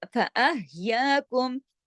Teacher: हा जो है गले में सांस चलती है इसमें ना, ये गले से पढ़ा जाता है, हरफ हल्की है।